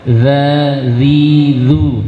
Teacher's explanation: huruf dzal maka cara mengucapkan lidah keluarkan sedikit dari ujung gigi